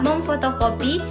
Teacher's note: Sedangkan pada kata memfotokopi fonem N berubah menjadi M karena bertemu dengan fonem F yang sama-sama bilabial. Perubahan ini asimilasi dan peluluhan fonem yang membuat kata menjadi lebih alami saat diucapkan.